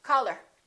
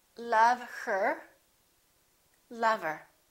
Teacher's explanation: let's look at what happens to the word her same thing we drop the h we don't say call her generally when people are speaking naturally we say color